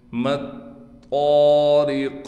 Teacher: طا کو موٹا بھی کر کے پڑھیں گے اور قاف پر وقف کی حالت میں قلقلہ کیا جائے گا۔